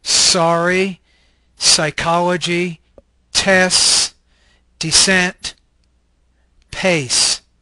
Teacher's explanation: This is an alveolar fricative voiceless consonant.